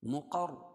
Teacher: را پور ہوگی رائے مشددہ ہے